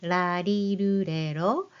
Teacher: These sounds are unique because they're not quite like the English L or R, but something in between.